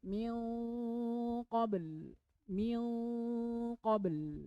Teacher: nunnya ada tapi samar abu-abu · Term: ikhfa